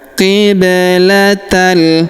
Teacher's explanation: Huruf ba berharakat sukun kita pantulkan atau kita qalqalahkan. Qiblatal. Kemudian huruf ta langsung sambung masuk ke huruf la yang berharakat tasydid. · huruf ba berharokat sukun kita pantulkan atau kita qalqalahkan